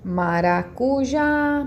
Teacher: aqui eu falo mais tempo é o já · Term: sílaba tônica